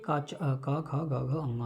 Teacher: ये इनका जो उच्चारण स्थान है वो क्या है, जिह्वामूल और कंठ है। जिह्वामूल का मतलब है कि जिह्वा का अग्रभाग है और कंठ है।